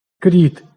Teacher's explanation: Кріт «к» не зубний, отже він не пом'якшується.